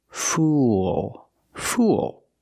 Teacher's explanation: Use the dark L at the end. Link the sounds oo with the dark L. It makes an extra sound.